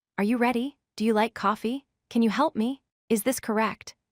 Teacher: Notice how each of these questions ends with a rising pitch. Your voice goes up on the last word or syllable. This rising pitch tells the listener that you are asking a question, not making a statement. · When you ask a yes or no question, your voice must rise at the end. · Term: rising intonation